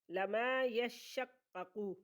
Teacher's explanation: شین مشدد پیچھے ملے گا، خود بھی پڑھا جائے گا